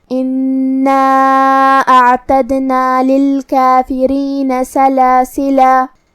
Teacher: کلمت للکافرین میں یہاں را کے نیچے زیر ہے تو یہاں را کا حکم ہے ترقیق. ہم حرف الرا کو ہلکی آواز میں پڑھیں گے. کلمت سلاسلہ کے آخری میں الف پہ گولہ نشان ہے.